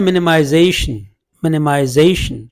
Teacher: तो मिनिमाइजेशन में secondary stress यहाँ पे है, प्राइमरी स्ट्रेस यहाँ पे, यानी जेशन पे ज़्यादा स्ट्रेस होगा, मिनिमाइजेशन मिनने पे कम होगा।